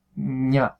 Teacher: la punta de la lengua detrás de los dientes de abajo en vez de arriba tercer paso con mis manos subo la mandíbula y ahora pronuncio · Y ahora pronuncio pensando en una N, ña. Y ahí tendría el contacto al subir la mandíbula entre el dorso de la lengua y el paladar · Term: la ñ, ñ palatal